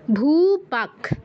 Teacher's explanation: বিসর্গ স্থলে খয় হসন্ত উচ্চারণ হবে